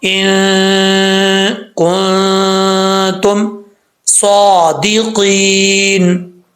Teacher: اور کاف کے بعد بھی نون ساکن ہے, آگے نون ساکن کے بعد تا آ رہا ہے, یہاں پہ بھی نون ساکن کا اخفا ہوگا, یعنی ایک الف کی مقدار غنہ کریں گے